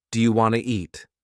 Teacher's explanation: Sometimes sounds are dropped, like the T in want to. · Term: Connected speech